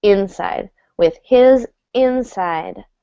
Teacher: Here, I believe this is functioning as a noun, and we're actually going to stress the first syllable